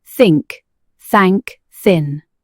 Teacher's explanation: Your throat is quiet, no vibration. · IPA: /θ/